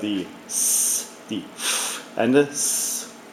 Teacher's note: the unvoiced single consonants represents a friction sound that sounds like hot water, steaming water released from the tea kettle upon boiling.